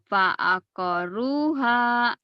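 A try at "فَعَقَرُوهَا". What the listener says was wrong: Fa'aqaru. Panjang. Fa'aqaruha. Fa'aqaruha.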